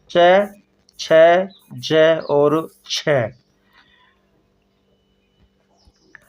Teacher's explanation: उच्चारण का समय अपेक्षाकृत अधिक लगता है अपेक्षाकृत अधिक लगता है उच्चारण के बाद वाला भाग संघर्षी हो जाता है · उच्चारण के बाद वाला भाग संघर्षी हो जाता है, तो उन्हें क्या कहते हैं स्पर्श संघर्षी व्यंजन।